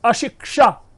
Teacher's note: छ कहीं इसमें नहीं है, इसमें क और मूर्धन्य श है, तब जाकर के यह शब्द बना है अशिक्षा।